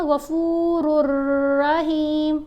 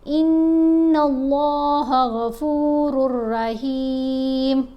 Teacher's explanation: اب یہاں اگر ہم پڑھتے ہیں نا غفور الرحیم، تو الرحیم یہ جو رکے غنہ کیا تو یہ غلط ہے، را اور لام کے اوپر ہم نے نہیں غنہ کرنا، اس کو جلدی سے ادا کیا جاتا ہے